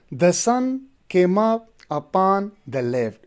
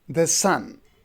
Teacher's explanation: So the first foot, the sun, unstressed and stressed, the sun. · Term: iambic tetrameter